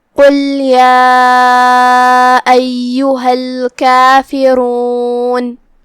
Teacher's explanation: کلمت قل میں یہاں حرف القاف ہے. قاف کی ادائیگی زبان کے جڑ اور تالو کے نرم حصے سے ہے. قاف حروف التفخیم میں سے بھی ہے تو ہم اسے بھاری آواز میں ادا کریں گے.